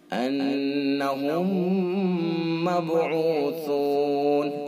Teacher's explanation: انہم مبعوثون، آگے با ہے، با ساکن ہے اور حروف قلقلہ میں سے، اس لہذا با کے اندر قلقلہ ہوگا